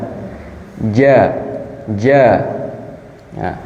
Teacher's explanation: jim jin itu berada di tengah lidah